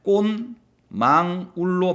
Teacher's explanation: 뒤에 오는 비음, 미음 때문에 앞에 오는 디귿이 바뀌게 되겠죠. 최종적으로 이렇게 꽃망울로 바뀌게 될 거고 디귿이 니은으로 교체가 됐어요. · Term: 비음화 현상